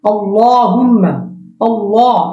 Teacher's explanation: এই লামটা মোটা হবে মিমটা গুন্না